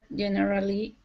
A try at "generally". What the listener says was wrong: Close. So like memorable, we would have this middle syllable silent. So generally. Generally. It's more, we just often don't pronounce it. Most people don't pronounce it. So it would sound strange to say generally. Generally.